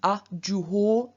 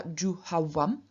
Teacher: o, which is originally au, appears as av in front of vowels